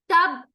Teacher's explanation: तब्बत यदा, तब्बत, देखें, तब, ता का मखरज, जबान की नोक सामने वाले दांतों के बैक साइड टच करते हुए ता का मखरज निकलेगा